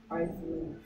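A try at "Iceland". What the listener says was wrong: S가 뮤트죠, 뮤트. 아일랜드야. 이즐랜드도 아니고. 아일랜드 S가 소리 안 나.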